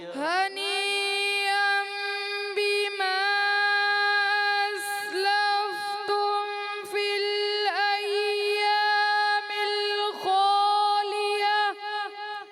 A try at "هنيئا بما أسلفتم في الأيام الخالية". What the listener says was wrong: اچھا پڑھا مگر مد آپ نے کمزور کر دی پہلی والی جو ہے تو آپ کوشش کریں مد کو پورا کریں تو اور خوبصورت ہو جائے گی کیسے ہنیئا بما اسلفتم فی الایام الخالیہ